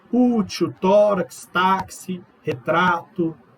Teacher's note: sílaba tônica ela é a penúltima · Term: Paroxítonos